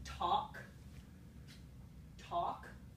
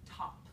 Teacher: So what changes is the place of articulation. The manner stays the same, the voicing stays the same, but the place of articulation moves forward in the mouth. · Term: fronting